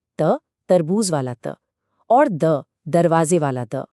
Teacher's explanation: दंत्य व्यंजनों की आवाज तब निकलती है जब हमारी जीभ दांतों को छूती है